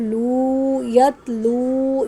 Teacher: یہاں واو مدہ ہے اس سے پہلے پیش ہے ایک الف کے برابر لمبا کریں گے